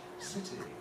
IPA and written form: sɪti (city)